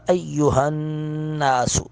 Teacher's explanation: نون مشدد پر غنہ کریں گے